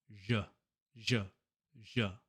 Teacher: Fortunately, the only thing you need to change for this one is instead of making a sh sound, we make a j sound. It's the exact same as sh, but your vocal cords are vibrating.